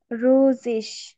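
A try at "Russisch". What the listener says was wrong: রুসিস, এটা double S আছে, double S এর মতো উচ্চারণ হবে।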